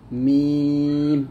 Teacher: মিম দুই ঠোঁটের শুকনো অংশ মিল করে মিম উচ্চারণ করব, মিম, এরকম ভাবে।